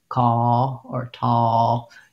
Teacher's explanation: like just a distorted vowel it'll sound like call or tall you can't hear that i'm making an l because the shape of the vowel is too close to the shape of the l so when in doubt um even for words like feel or